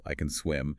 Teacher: For the positive can, we teach them to stress the auxiliary verb itself.